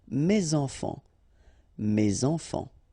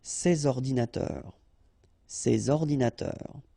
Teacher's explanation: And in that case, I took the plural form, so these here, and then ordinateur, computers. So you should make the liaison between S and O